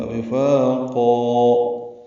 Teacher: فا الف مدہ 2 حرکات لمبا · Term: مد عوض